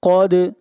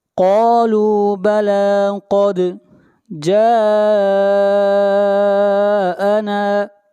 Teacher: قد قاف کو موٹا پڑھیں گے اور دال کے اوپر قلقلہ ہوگا۔ قالوا بلا قد جاءنا، جاءنا جا کے اوپر مد متصل ہے، اس مد کو 3 الف کے برابر کھینچ کر پڑھیں گے۔